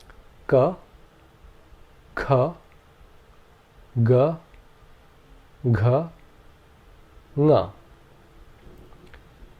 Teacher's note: the air is blocked by the Tongue at the back of the throat until a vowel comes along and releases the air along with the sound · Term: gutturals